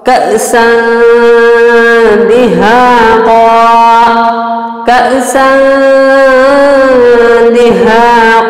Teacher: یہاں ہم نے نون اور تنوین کو اخفا اور غنہ کے ساتھ پڑھا ہے